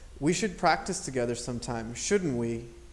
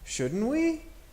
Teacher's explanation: the tag is very neutral. There is no up accent or down accent. It's just said almost exactly the same as the affirmation.